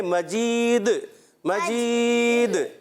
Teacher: تو وف کی صورت میں یہ سکون ہو جائے گا، ساکن ہو جائے گا، اس لیے مجیدن نہیں پڑھیں گے